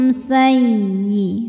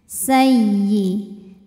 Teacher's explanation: jelas ankum sayyi sayyi ya tasydid kita bunyikan dengan naber jadi kita naikkan intonasi nada kita ya tanpa harus menahannya